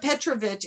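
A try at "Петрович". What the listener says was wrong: Petrovich. No, it's on the O. It's Petrovich. It's always on the next to the last syllable.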